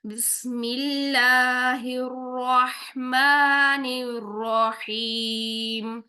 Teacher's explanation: र को हम मोटा रखेंगे क्योंकि र के ऊपर जबर है रह हम रह नहीं करेंगे रहमान नहीं करेंगे हम क्या करेंगे